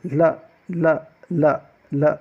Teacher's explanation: जो ल होता है, ल के उच्चारण में होता क्या है कि जब हम ल का उच्चारण करते हैं तो जब हमारी जीभा जो होती है ऊपर में मूर्धा में टकराती है तो जो श्वास है वो दोनों तरफ से निकलती है, दोनों के बीच से निकलती है। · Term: पार्श्विक व्यंजन